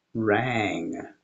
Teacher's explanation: It's where you raise the back of your tongue up against the roof of your mouth and you open your velum and allow air to go out your nose. But the same thing happens because the tongue position for the ung is the same as for the hard G.